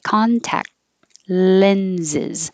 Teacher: You don't have to say the final T at all, and that C sounds like a K. So you can say contact and hold the K.